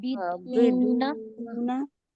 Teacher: जजम वाली वाव हो और उसके पहले पेश हो तो वाव मद्दा होगा, और इसे हम एक अलिफ की मकदार खींच कर पढ़ेंगे। · नून पे जबर की हरकत है, हम इसको बिल्कुल नहीं खींचेंगे, जल्दी पढ़ेंगे